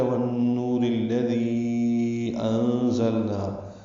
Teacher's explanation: را کو الذی کے لام سے ملا دیں گے، دال نرمی سے پڑھیں گے. یا مدہ کے بعد حمزہ آنے کی وجہ سے مد منفصل ہے